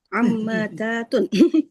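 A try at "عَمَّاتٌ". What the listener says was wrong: Kebanyakan taknya, tapi hampir benar. Ammatun.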